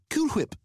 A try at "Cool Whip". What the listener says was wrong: Cool Whip. You're saying it weird. Why are you putting so much emphasis on the H?